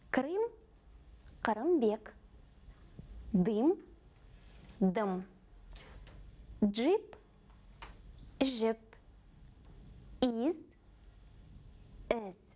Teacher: И в русском языке есть схожие по звучанию звуки «ы» и «и». Но казахские произносятся намного короче.